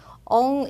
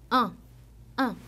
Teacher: 먼저 보면 바로 엉이라는 발음이에요 한국어는 제가 응으로 썼지만 엉 이렇게 입에서만 나는 소리가 아니라 코를 울려서내는 소리라고 보시면 돼요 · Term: 비모음